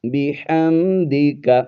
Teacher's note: میم کو ظاہر کر کے پڑھیں گے، یہاں پر آواز کو زیادہ دیر تک ناک میں چھپا کر نہیں پڑھنا ہے آپ نے